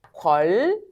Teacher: 비음이었던 니은이 뭐로 바뀌는 거? 유음인 리을로 바뀌는 거야. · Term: 유음화